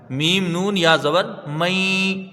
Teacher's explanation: یہاں پر ایک الف کی مقدار غنہ ہوگا